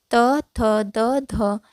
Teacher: त थ द ध यह चारों का उच्चारण स्थान दंत होगा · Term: दंत्य